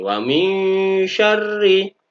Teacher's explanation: Nah, ada nun sukun lagi bertemu dengan shin, namanya bacaan ikhfa, dibaca secara samar-samar nun sukunnya NG dengan sedikit dengung dan ditahan.